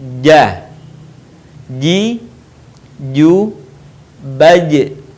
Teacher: Huruf ini dilafalkan dengan menyentuhkan tengah lidah kita ke daerah langit-langit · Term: huruf ja